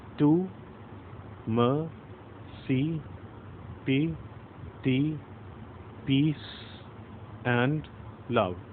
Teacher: And in mercy, mer is stressed.